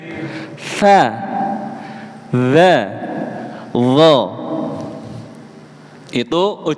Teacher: ujung lidah ketemu gigi depan Pak, keluar sedikit